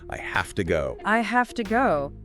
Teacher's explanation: The V sound in have changes to an F sound before the voiceless T of two. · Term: connected speech